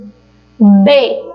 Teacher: b eu tenho um toque dos meus lábios né toque bilabial